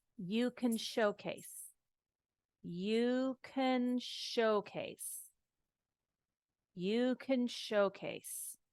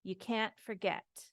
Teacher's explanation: if it's a can then it flows it doesn't have that stop